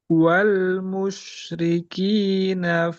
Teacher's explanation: pendek rinya pendek na panjang